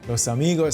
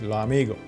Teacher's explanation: Final S sounds often disappeared or turned into a light breath.